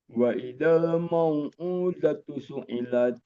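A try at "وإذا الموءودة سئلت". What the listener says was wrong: Ma lebih ditipisin lagi. Wa idzal mau bukan mau enggak. Udatu suilat.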